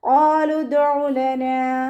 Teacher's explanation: ഹംസത്തുൽ വസ്ൽ വന്നു, അപ്പോൾ അതിനെ കട്ട് ചെയ്തിട്ട് ഉച്ചരിക്കുക. അയിനിൻ്റെ മഖ്റജ് ശ്രദ്ധിക്കുക കേട്ടോ. വസത്തുൽ ഹൽക്ക് തൊണ്ടയുടെ മധ്യഭാഗം. നൂനിൻ്റെ കൂടെ അലിഫ് മദ് വന്നു, 2 കൗണ്ട് നീട്ടിക്കൊടുക്കുക.